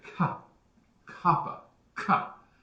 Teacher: Kappa, we do the same thing as in gamma, except when we say kappa, we pop it a little harder. We make it a crisper sound. You can feel if when you say ka, kappa, ka, you can feel your tongue back there hitting the roof of your mouth.